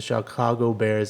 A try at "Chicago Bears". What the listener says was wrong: Chicago Bears or It sounded like you said Chicago. I didn't hear the ch.